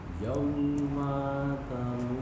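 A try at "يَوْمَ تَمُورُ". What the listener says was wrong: Maknya pendek. Yauma tamu.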